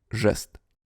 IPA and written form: ʐɛst (жест)